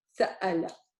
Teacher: The Hamza, make sure you stop in the middle. Sa'ala. In the middle, the waw, if the waw is a carrier, it gives it a short oo sound.